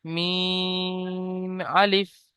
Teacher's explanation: আচ্ছা এখানে এটাকে বলবেন এখানে প্রথমে আছে এতটুকুই আছে মিম আর আপনার সাথে জুড়ে গিয়েছে আলিফ তাহলে পড়বেন মিম আলিফ সাথে এটা জুড়ে গিয়েছে আলিফ মিম তিন আলিফ টান ছিল এজন্য তিন আলিফ টান দেবেন আলিফ মোটেও টান হবে না